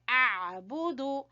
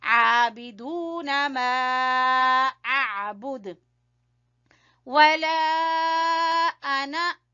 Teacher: عین کو گلے کے درمیان سے، با کو چھوٹا پڑیں گے، دال کو بھی چھوٹا پڑیں گے